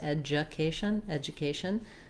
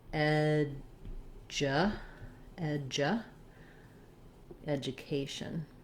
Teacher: this d u actually has more of a j sound